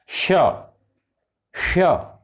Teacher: हिसिंग माने जैसे सर्प सी करता है, श जैसा उच्चारण होता है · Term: हिसिंग साउंड